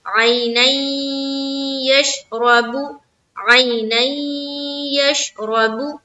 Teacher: तो उसमें से या है, तो ये भी क्या हो गया, इदगाम का कायदा में आ गया। अब यहाँ पर हमें करना है इदगाम, तो हम नून को या से मिलाएंगे